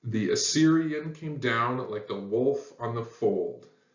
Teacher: syllables long but it's exactly the reverse of a Dactyl so it goes unstressed unstressed and then the third and final syllable is stressed so instead of it's one two three one two three one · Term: anapest